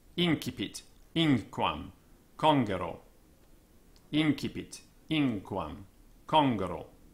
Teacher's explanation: N, as ng in sing, so N before C. N in sink, thus incipit, inquam, congero, incipit, inquam, congero.